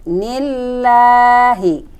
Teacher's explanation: Nah, ini adalah lam jalalah tarkik, dibacanya bukan nillah tapi nillah karena sebelum lam jalalah ada huruf yang berbaris kasroh. Dibacanya tarkik tipis.